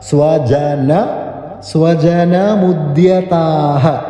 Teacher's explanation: ആ ജകാരം ചവർഗ്ഗത്തിലെ മൃദു അക്ഷരം ജ